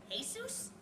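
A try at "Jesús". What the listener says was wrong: you don't pronounce the J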